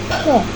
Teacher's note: Bunyi P diproduksi dengan aliran udara lebih kuat sehingga menghasilkan bunyi aspirasi atau bunyi yang disertai dengan udara